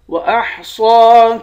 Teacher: صاد کو موٹا پڑھیں گے، صاد کے اوپر کھڑا زبر ہے، کھڑے زبر کو ایک الف کی مقدار کھینچ کر پڑھتے ہیں۔